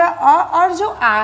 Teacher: अ और आ इनका उच्चारण स्थान कंठ है।